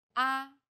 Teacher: Every syllable in Chinese pronunciation is stressed with one of the four different tones. The first tone is steady with a high pitch.